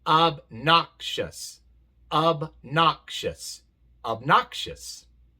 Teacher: La sílaba acentuada es la segunda y por eso la O en la primera se pronuncia A. Pero la O en la segunda se pronuncia A porque sí viene en la sílaba acentuada, sola en la sílaba acentuada y por eso se pronuncia A.